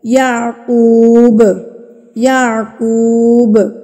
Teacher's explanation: جب ہم نے اس با پہ وقف کرنا ہے نا تو ہم اس کو ہلا کے پڑھیں گے، قلقلہ کر کے پڑھیں گے